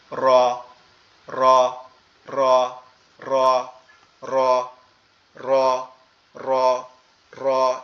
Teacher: যেমন ধাক্কা খায় না, বাড়ি খায়, কম্পন হয়, বা অনেক সময় বাঁশি বাজাইলে দেখবেন যে আমাদের ওই যে রেফারি যে বাঁশিগুলা দেয় খেলার মধ্যে বা খেলাধুলার মধ্যে, ওই বাঁশি বাজাইলে যেমন বলটা যেমন বাড়ি খায় না, ওরকম বাড়ি খাবে। এটা আমাদের জিহ্বার উল্টা পিঠ, উপরের তালুর সঙ্গে লাগবে